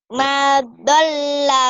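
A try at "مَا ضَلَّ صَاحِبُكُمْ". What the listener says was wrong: Ma-nya panjang, satu alif. Ma-nya panjang. Ma dhalla sahibukum wa ma gawa.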